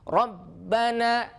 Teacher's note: Ba itu punya sifat syiddah, maka ketika bertasydid suaranya terputus.